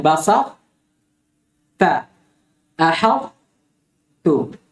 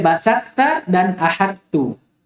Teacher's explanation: Itbaq. Maksudnya perjelas sifat itbaq yang ada pada ta. Walaupun dia diidgham kepada ta.